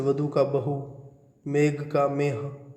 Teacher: ये जो ख, घ, थ, ध, भ थे उनका ह हो गया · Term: महाप्राण व्यंजनों